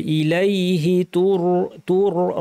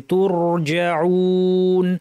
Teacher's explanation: ইলাইহি তুর রটা ভারী হবে।